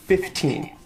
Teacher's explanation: you could put the stress on the second syllable 15 but most common I think is to put an even stress on both syllables